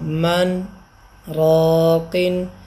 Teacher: سانس نہیں توڑی، صرف رکا ہوں اور پھر اگلا حرف پڑھ لیا، تو اس انداز کو سکتہ کہتے ہیں